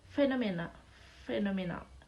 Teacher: Phenomena is fricative sound too, using your lower lip and teeth.